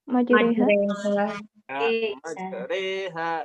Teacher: Kalau alif mumalah itu antara alif dan ya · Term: Imalah